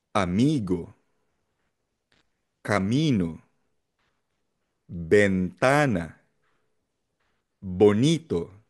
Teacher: In short, kapag ang salita or Spanish word ay nagtatapos sa letter N, sa letter S, or sa vowels A, E, I, O, U, ang stress o diin ng salita ay nasa second to the last syllable o penultimate syllable. Bibilang ka ng dalawa mula dulo.